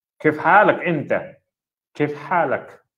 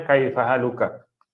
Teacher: Kalau berbicara pun kadang-kadang bila berbicara dia tanya kaif. Kaif, bukan kaifa, kaif. Dia standard logat ataupun lahjah orang Arab.